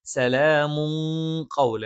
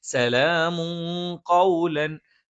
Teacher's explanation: മണിച്ചഉച്ചരിക്കണം സലാമു കൗലൻ നൂനിനെ വ്യക്തമാക്കിയിട്ട് മണിക്കുകയല്ല വേണ്ടത് പകരം സലാമും കൗല അപ്പ ആ തൻവീനിന ഒന്ന് അവ്യക്തമാക്കി ഉച്ചരിച്ചുകൊണ്ട് മണിക്കണം സലാമും കൗലൻ കൗലമിൻ തൻവീൻ ശേഷം മ ഇാമും വന്നയാണ് തൻമീനി ശേഷമുള്ള മീമിലേക്ക് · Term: ഇഹഫ